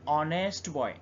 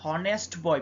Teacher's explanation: অর্থাৎ হয় এইচ এর উচ্চারণ করছি না আমরা এইচ কে সাইলেন্ট রেখে অনেস্ট বলছি